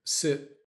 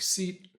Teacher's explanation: when they're not kept short, the i ends up sounding like the tense e.